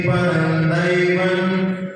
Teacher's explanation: पदम के ऊपर जो बिंदी है वो आगे दा होने के कारण ना के रूप में परिवर्तित हो जाएगी। और देवम के बाद में तो ना है, तो वो भी ना के रूप में उच्चारण करेंगे।